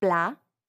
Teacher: Notice how the final T is not pronounced. That's because in French, generally, if a word ends with a consonant, it's silent.